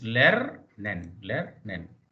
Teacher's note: The rule is that the last syllable, the final syllables are usually unstressed. So in German, the first syllable is stressed and the last syllable, here of course second syllable or last syllable is unstressed.